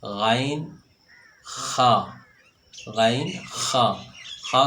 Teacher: خا کو اس انداز سے ادا کیے ہے، ایک رگڑ سی پیدا ہوئی ہے۔